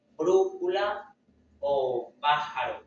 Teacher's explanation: Eh, ahora pasamos a las esdújulas. La sílaba tónica está en la antepenúltima sílaba, siempre lleva tilde. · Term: esdrújulas